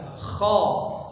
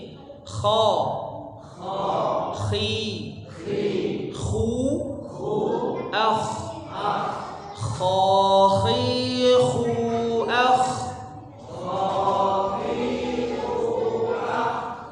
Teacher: Jadi ada getarannya di tenggorokan kita. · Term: huruf kha